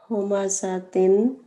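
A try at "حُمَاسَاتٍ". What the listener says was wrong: थोड़ा सा स्ट्रेच करें. स्ट्रेच्ड नेजल साउंड होता है इसका.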